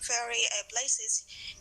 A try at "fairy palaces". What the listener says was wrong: fairy palaces. Palaces, not a place. Palaces. Palaces.